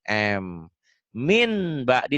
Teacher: iqlab bunyi n-nya jadi m tapi bindeng